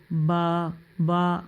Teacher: ये होठों की अंदरूनी तरी वाले हिस्से से अदा होता है